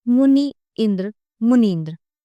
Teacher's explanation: मुनि का इ तथा इंद्र का इ मिलकर इ हो गया है। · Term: संधि